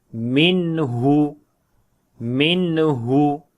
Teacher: After the noon sakin there is ha, which is throat letter. So we make the clear sound of noon like it is izhar here without gunna